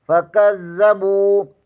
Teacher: کاف زبر کو زال کے ساتھ ملائیں گے، زال مشدد ہے، اسے دو بار پڑھیں گے